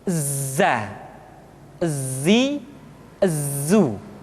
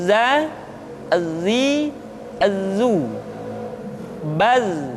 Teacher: ketika kita mengucapkan huruf za, suara kita mengalir, akan tetapi nafas tidak boleh mengalir. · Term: al-jahr